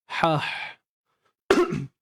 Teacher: Hams ni. Berlakunya pelancaran nafas dengan baik disebabkan tidak ada getaran pada tali suara. Tali suara kita ni dia tidak bergetar. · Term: sifat hams